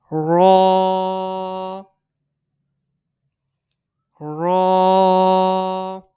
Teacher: یہ زبان کی نوک اور تالو کی مدد سے ادا ہوتا ہے